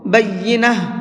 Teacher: بینہ، یہاں پر ہم نے وقف کیا ہے گول تا پر، اور گول تا پر وقف کرتے ہیں تو گول تاہا بن جاتی ہے، اس لیے میں نے اس کو بینہ پڑھا ہے۔